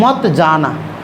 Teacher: मत और जाना के बीच में थोड़ा सा आराम है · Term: संगम